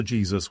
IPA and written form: ˈdʒiː.zəs (Jesus)